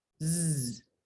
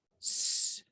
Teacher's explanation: Entonces, ustedes pueden ver que para producir la consonante s, no tenemos ninguna vibración de las cuerdas vocales. Así que la alternancia entre s, nos puede demostrar muy fácilmente la diferencia entre vibración y no vibración de las cuerdas vocales